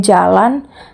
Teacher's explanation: tempat artikulasinya palatal dan suaranya bersuara